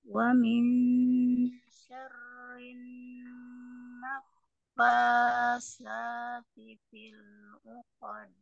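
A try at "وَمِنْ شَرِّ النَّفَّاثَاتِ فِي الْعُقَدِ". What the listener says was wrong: Baik, kurangi kadar mat tabi'inya. Wa min syarrin naffatsati fil 'uqad. Jangan terlalu panjang.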